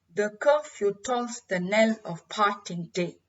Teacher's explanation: The curfew tolls the knell of parting day is an example of an unstressed syllable followed by a stressed syllable